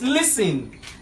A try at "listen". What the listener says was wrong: No. Listen. Listen. Because the T is silent.